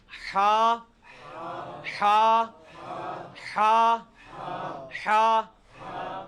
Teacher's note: یہ وسط حلق سے یعنی حلق کے درمیان سے نکلتا ہے۔ یہ کبھی آپ وہ گلے والی ٹافی کھائیں نا، وہ والی آواز ایکزیکٹ بالکل کلیئر وہاں سے جو نکلتی ہے نا، یہ ہا کا مخرج وہی ہے، ہا۔